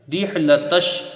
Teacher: रा को हा से मिला के जल्दी पढ़ा जाएगा, रा बारीक होगी। लाम के ऊपर ज़बर है, जल्दी पढ़ा जाएगा।